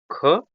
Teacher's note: ख अघोष महाप्राण है